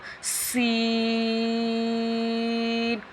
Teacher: یہ حروف صفیرہ ہے، سیٹی والا حروف ہے، اس میں سیٹی کرنی ہے ہم نے